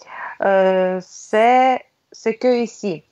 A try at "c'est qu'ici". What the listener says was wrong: C'est qu'ici. On ne dit pas ce que, on dit c'est qu'ici. Il n'y a pas de E.